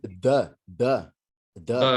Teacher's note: it's just that weak middle of the mouth vowel sound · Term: schwa sound